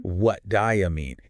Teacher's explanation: Those distinct words, they sort of melt into each other.